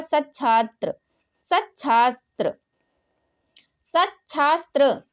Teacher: तो सा तो चा में बदलेगा, यानी ता के बाद यदि सा हो तो ता का चा और सा का छा हो जाता है